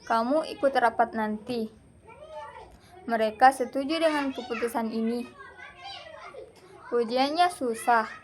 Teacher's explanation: Perhatikan perbedaan intonasi yang naik di akhir kalimat.